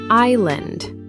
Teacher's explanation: The S is silent, pronounced island.